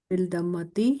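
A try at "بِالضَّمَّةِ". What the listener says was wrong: बिल नहीं होगा, द्वाद जो है ना ये आपका रुके शम्स। उसका ख्याल रखना है ना।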